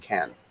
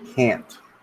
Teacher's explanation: So in spoken English, can is usually unstressed and pronounced can. Can't is stressed and pronounced can't, with the final sound being a glottal stop.